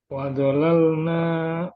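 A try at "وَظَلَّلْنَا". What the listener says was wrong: Wa dhallalna. Lamnya bertasydid yang pertama. Wa dhallalna. Ulang wa dhallalna.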